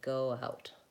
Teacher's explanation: If I just go from O to ow, oh, ow, my W will come in naturally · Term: linking